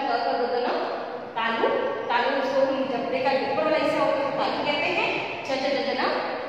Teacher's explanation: उच्चारण स्थान कंठ यानी गला